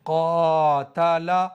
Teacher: काफ हरूफ मुस्तालिया के सात हर्फों में से है। यानी काफ मोटा पढ़ा जाता है। तो अलिफ भी यहां मोटा पढ़ेंगे। जैसे कातला यानी अलिफ से पहले मोटा हर्फ तो अलिफ भी मोटा। · لیکن یہاں پر دیکھیے الف سے پہلے قاف ہے، اور قاف حروف مستعلیہ کے 7 حرفوں میں سے ہے، یعنی قاف موٹا پڑھا جاتا ہے، تو الف بھی یہاں موٹا پڑھیں گے